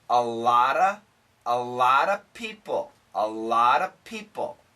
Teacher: the faster we say this there'll be no V because this consonant can cancel